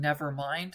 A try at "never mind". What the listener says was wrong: I think it's there's no glottal stop. It's just never mind.